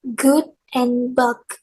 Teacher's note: For the g consonant, there's good and bug. We block the airflow with the back of the tongue against the soft palate or velar.